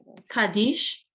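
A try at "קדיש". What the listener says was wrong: That's correct.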